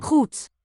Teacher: Okay, just as in German, a word final Goed. D consonant is going to devoice to a T.